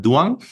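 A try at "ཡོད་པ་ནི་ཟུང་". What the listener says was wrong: Duang, but one beat. Yopa Niduang.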